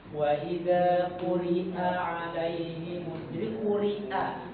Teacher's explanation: Sifat dia syiddah, maka disyiddahkan. Jadi hamzah ini syiddah. Jadi dia bukan rokhawah. Jadi harus betul-betul diperjelas.